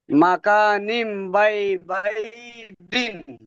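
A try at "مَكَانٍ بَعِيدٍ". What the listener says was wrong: বাঈদিন, বাঈদিন, মাশাআল্লাহ মাশাআল্লাহ, জাযাকাল্লাহ।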